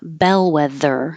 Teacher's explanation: and the th is voiced